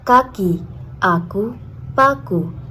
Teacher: K lepas diucapkan dengan hambatan penuh dan letupan jelas. Biasanya muncul pada awal suku kata.